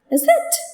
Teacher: See, the tone goes up. The pitch moves from low to high. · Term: rising tone